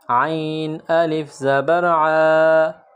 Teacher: عین کو گلے سے نکالیں گے، گلے سے زور لگا کر عین کو نکالیں گے